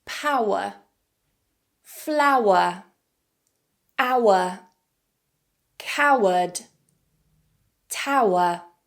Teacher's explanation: this is a combination of /aʊ/ and /ə/ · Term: triphthong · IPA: /aʊə/